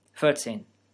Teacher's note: In 14, at least in my non-native idiolect of German, the R creates a diphthong after the high, lax, unrounded vowel I